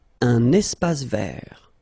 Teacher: Final E not pronounced, and then final T not pronounced.